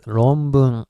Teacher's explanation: N is supposed to be pronounced as M because next one is B